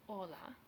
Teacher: H's in Spanish are always silent, as in hola